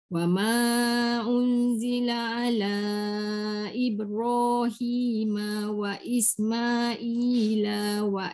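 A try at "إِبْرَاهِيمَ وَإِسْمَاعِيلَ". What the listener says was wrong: Ibrahim wa Ismaila, jangan panjang.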